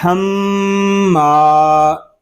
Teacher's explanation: ہم ما صرف غننے کی آواز ناک میں جائے گی. یا میم کو ہم الف کے ساتھ پڑھیں گے تو پھر ناک میں آواز نہیں جائے گی